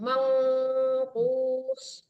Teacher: Jangan man ya Bu, mang disamarkan ke ong kalau nun ketemu qaf ikhfa hakiki ya berdengung